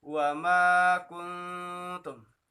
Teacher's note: Maka dibacanya adalah samar-samar, khunnah, atau dengung, yaitu dengan wa ma kuntum